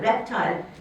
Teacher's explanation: you can hear the second syllable could have a secondary stress